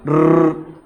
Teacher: अब र बोलते हैं तो आप देखना कि हमारी जीवा के अंदर कंपन होता है और ऐसे लगता है कि जीवा के यहां पर कुछ है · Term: लुंठित